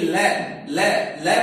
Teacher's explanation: हमारी जीभ दांत को स्पर्श नहीं कर रही है, वो मूर्धा यानी ऊपर, दांतों के ऊपर जो मसूड़े हैं उनको टच कर रही है